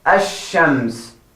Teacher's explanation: So what lam does is sacrifice for sh and says, I will drop and you take my turn. And becomes double tashdid, ash-shams. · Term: shamsi letters